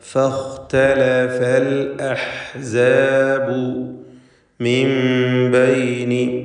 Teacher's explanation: സാക്കിനത്തായ നൂൻ ബാ ശേഷം വന്ന കാരണത്താൽ നൂനിനെ ഇഖ്ലാബ് ചെയ്യണമെന്നതാണ്. മീമാക്കി മാറ്റി മണിക്കുക. ഫലത്തിൽ സാക്കിനത്തായ മീം ബായിന് മുമ്പിൽ വരുമ്പോൾ ഉള്ളതായ ഇഖ്ഫ ഷഫവി എന്ന നിയമം ഇതിന് നൽകപ്പെടുന്നു.